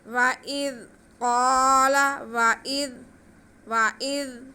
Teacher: زال کو نرمی سے پڑھنا ہے، سٹی کی آواز نہیں آنی چاہیے اس میں۔ وَإِذْ قَالَ، وَإِذْ زال کی آواز کو ہلانا بھی نہیں ہے اور سٹی کی آواز بھی نہیں ہے۔